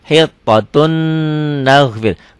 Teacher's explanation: Tulisannya hittotun ada n-nya, n-nya masuk ke n berikutnya. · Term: idgham bigunah